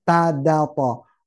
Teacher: Ujung lidah menekan pangkal gigi gigi seri atas